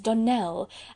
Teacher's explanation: the correct pronunciation of our name is Donell, accent on the last syllable